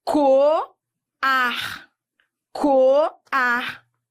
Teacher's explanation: Hiato. Duas vogais, uma seguida da outra, em sílabas diferentes.